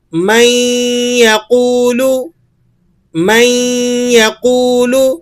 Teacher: نون ساکن کے بعد یرملون کا یا آ رہا ہے، ادغام مع الغنہ ہوگا.